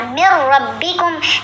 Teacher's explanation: لیکن میم کو را سے ملاتے ہوئے غنہ نہیں کریں گے. من ربکم ایسے کر کے نہیں پڑھنا، من ربکم.